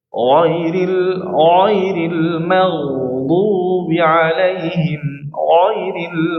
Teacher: ghain sama kha selalu dibaca tebal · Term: huruf tebal